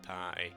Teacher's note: I guess I'd do it with a glottal stop.